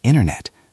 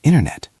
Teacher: >> This happens a lot with the letter T. When a T sound is in the middle of a word, sometimes we drop it to make the word smoother.